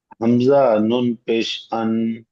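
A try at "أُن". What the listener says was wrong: হামজা নুন পেশ আন হয় না, হামজা নুন জাবার হলে তাহলে আন হয়। হামজা নুন পেশ উন।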